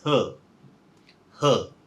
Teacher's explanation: We have this R, but this R is controlled. It changes into a vowel sound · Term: R control syllable